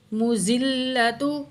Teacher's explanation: زال کو نرمی سے پڑھنا ہے اور میم کی پیش کو زال کے ساتھ ملائیں گے تشدید کی وجہ سے، میم پیش زال، مز، یہ الف اور لام دونوں کو نہیں پڑھیں گے۔